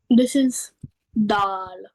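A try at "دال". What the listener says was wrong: Yeah, make it more softer, gentler. You have to press the tip of the tongue at the hill very gently and softly. light letter. It's a more softer as compared to ta. It is more soft as compared to ta. Tip of the tongue will be touching at the hill.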